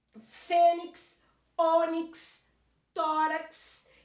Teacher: Então, eu tenho o finalzinho em X e a mais forte não é a última, é a penúltima